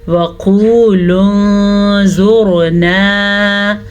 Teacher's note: ज़ुआ को पुर पढ़ेंगे और रा को भी पुर पढ़ेंगे। रा अगर साकिन हो तो पीछे वाली हरकत जो है वो डिपेंड करती है, उसके हिसाब से रा पुर या बारीक पढ़ी जाती है।